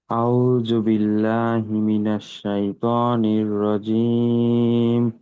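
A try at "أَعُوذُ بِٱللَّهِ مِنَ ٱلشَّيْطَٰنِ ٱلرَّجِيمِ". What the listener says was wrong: আজকেও কিন্তু জালের উচ্চারণ হলো না প্রথমে।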